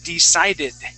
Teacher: my tongue is not touching my teeth it does not touch the teeth it's hitting the top of my mouth decided okay all right that's how we pronounce the d The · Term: English D